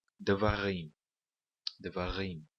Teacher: a última sílaba será a sílaba tônica · nós pronunciamos com o acento na última sílaba. É, é sempre assim no hebraico bíblico.